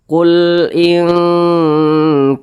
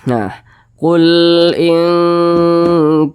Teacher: cara bacanya itu disamarkan kemudian didengungkan akan tetapi suara dengungnya itu lebih dominan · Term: ikhfa Hakiki